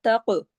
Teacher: جب قاف کے ساتھ جڑے گا تو قاف موٹا ہو جائے گا ، تق، اور کاف کو ہلا دیں گے، کاف پہ کلکلا